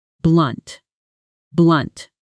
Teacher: Notice the stress falls hard and short on that single syllable, unlike candid, which softens slightly on the second syllable.